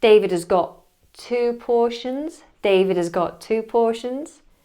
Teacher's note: Got is missing the T.